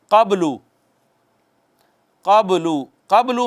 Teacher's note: قبلو میں با ساکن ہے، حروف قلقلہ میں سے ہے، تو کہتے ہیں اس پہ ذرا چھوٹا قلقلہ ہونا ہے